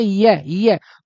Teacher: तो आपकी जीभ ऊपर की तरफ उठ के ये तालु से लगेगी। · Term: तालव्य वर्ण